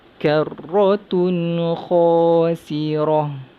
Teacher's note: Tun kita baca dengan izhar halki, baca dengan jelas.